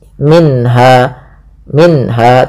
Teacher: bacaan izhar halqi yaitu suara nunnya dibaca dengan jelas. Minha minha tidak boleh minha langsung saja.